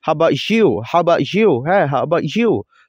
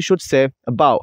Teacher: the word about, it has schwa sound and it started with schwa sound, so the word, the sound a, it's really schwa.